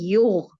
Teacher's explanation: غین یہ بھی موٹا حرف ہے، حروف مستعلیہ میں سے ہے. اس کو بھی ہم نے اپنی حلق میں ساکن حالت میں بھی موٹا ہی روکنا ہے.